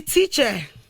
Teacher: it's a very, very weak vowel sound, and any syllable that this sound is actually present can never be stressed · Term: schwa sound